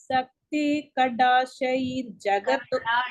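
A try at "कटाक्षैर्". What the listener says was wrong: டி போடாதீங்கோ, டி டைகர்.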